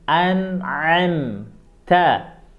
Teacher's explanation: huruf A itu tenggorokan bagian tengah, disempitkan tenggorokannya, dipaksa keluar suaranya. An'am, ta. Huruf ta dikasih sedikit angin.